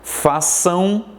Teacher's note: terminação nasal, parte do som sai por sua boca, parte pelo nariz